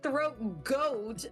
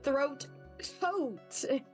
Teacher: It's being produced in the same place in the mouth. You just got to take away that voicing. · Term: devoice that G